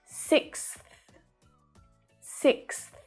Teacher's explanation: The k is at the back, the s is behind your teeth, and the th is at your teeth. Okay, so we're moving all the way through the mouth to make these sounds.